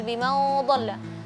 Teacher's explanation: Qunat ikhfa setelahnya huruf dhad. Dhad itu huruf tebal jadi qunatnya tebal